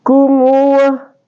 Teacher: Mim di sini adalah huruf asyafatain atau huruf 2 bibir. Jadi dia juga al-khaisun karena keluar di hidung. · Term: mim sukun